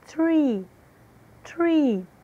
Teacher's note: som de T seguido de som de R, enrolado, que é a forma como se pronuncia a letra R em inglês.